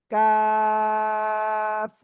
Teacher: চার আলিফ টেনে পড়বো আমরা।